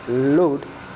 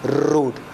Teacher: instead of saying load, they say road. Because instead of L, we have consonant R.